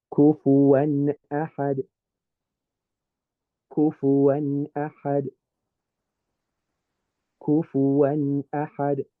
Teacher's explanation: So what I'm going to do when I approach this Nun sound up here, I'm going to make it nice and clear, but I'm not going to do the ghunnah. I'm not going to make the humming sound. I'm just going to make the n sound.